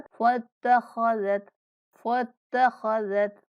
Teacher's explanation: फत्तख खा को पुर पढ़ेंगे, जाल को नहायत नरमी के साथ